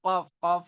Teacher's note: जबान की जड़ है, तो वहां से कौफ कौफ निकलता है